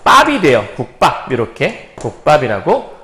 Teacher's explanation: 그래서 비읍이 쌍비읍이라는 된소리로 변하는 건데 어떨 때 되는 거냐면 앞쪽 받침에 앞소리의 받침에 그드브라고 하는 기역, 디귿, 비읍 파열음이 왔을 때 뒤에 있는 말이 된소리로 바뀐다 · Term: 된소리되기